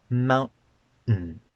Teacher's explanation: There's no T in that word at all. It's just two N sounds broken by a glottal stop.